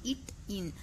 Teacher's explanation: ஆகிய இரு மெய்களும் நாவின் நுனி அண்ணத்தில் நுனியை பொருத்துவதால் பிறக்கின்றனு